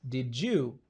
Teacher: D ya pili nayo inabadilishwa na kutamkwa J